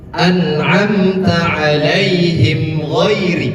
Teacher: Mim sukun bertemu dengan gain. Dibacanya jelas dan tidak ditahan. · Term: izhar syafawi